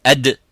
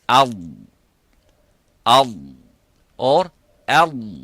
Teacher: Up, it stops completely. Okay, but for the dad, it doesn't stop completely, but release slightly towards the front, towards the makhraj of the lam, but it doesn't touch the front of the top front of the mouth